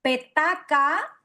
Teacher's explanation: son todas las consonantes oclusivas sordas